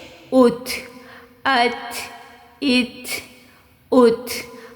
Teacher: اب کیونکہ تا جو ہے وہ حرف قلقلہ نہیں ہے تو ہم نے اس کی آواز کو اسی طرح سے پروناؤنس کرنا ہے، ہم نے اس پہ کسی قسم کی آواز کو باؤنس بیک نہیں کرنا